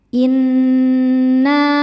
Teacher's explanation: Cara bacanya berdengung. Tahan dengungannya kurang lebih dua harakat. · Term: ghunah musyaddadah, gunnah musyaddadah